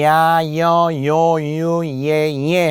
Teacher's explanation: 자, 이중모음은 야, 여, 요, 유, 예 할 때 바로 Y부터 이 반모음에 해당하는 Y가 발음상 존재하는 거예요